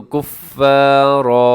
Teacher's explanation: کفارن کو آپ نے وقف کریں گے تو کفارا ایسے پڑھیں گے، 2 زبر پہ آپ ایسے وقف کریں گے۔